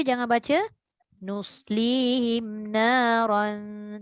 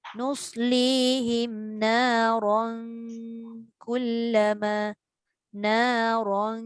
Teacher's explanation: Bila kita sambung, kita dah fokus dekat tanwin bertemu kaf je, tapi kita lupa ra itu dibaca dengan tebal. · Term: Ra tebal